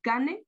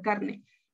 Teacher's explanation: Asimilación de la R, cane por carne.